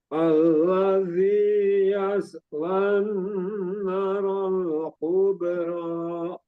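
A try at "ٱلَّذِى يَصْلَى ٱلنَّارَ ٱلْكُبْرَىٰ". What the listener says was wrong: Sekali lagi, na-nya panjang juga. Selain nunnya, na-nya juga ada. Jadi dinanya juga selain yaslan na-nya juga ada alif, itu matobi'i. Jadi dipanjangkan 2 harokat juga. Jadi bukan yaslan narol kubro, jadi na-nya kecepatan, hilang matobi'inya.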